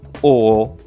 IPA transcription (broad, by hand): ɔ